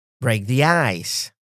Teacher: Stress on break and ice.